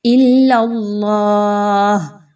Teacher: اللہ سے پہلے والے حرف لام کے اوپر زبر ہے، اس لیے اللہ کے حرف کو موٹا کیا جا رہا ہے، موٹا کر کے پڑھیں گے۔